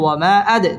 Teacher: দাল কলকলার হরফ, ধাক্কা দিয়ে পড়তে হবে।